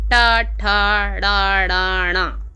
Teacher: इस तरह से मूर्धा से बोले जाते हैं ये सभी वर्ण